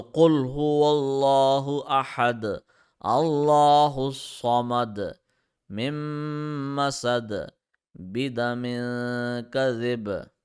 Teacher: When we stopped there, this double dhamma turned into sukoon, and since dal is one of the kalkala letters, we applied kalkala in stopping mode.